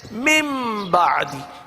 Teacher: نون کو میم سے بدل دیا جاتا ہے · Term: میم سے بدل دیں گے